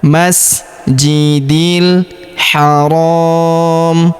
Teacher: Huruf ro kita panjangkan dua atau empat harakat ya. Karena di depan huruf ro terdapat alif sebelum huruf pemberhentian dan huruf pemberhentian huruf mi kita sukunkan atau kita matikan.